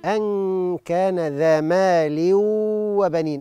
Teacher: أن كان النون بعدها كاف إخفاء حقيقي، مال وبنين إدغام بغنة ناقص